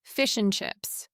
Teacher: And becomes an or even disappears. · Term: reduction techniques